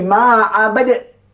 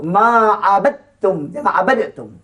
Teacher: maka dia baca dengan idgham kamil, masuk makhrajnya, masuk sifatnya.